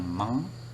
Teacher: Keluar udara ya, keluarnya udara itu tidak dari mulut tetapi dari hidung · jadi lidah kita menutupi rongga mulut, kemudian bunyinya keluar dari hidung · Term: bunyi nasal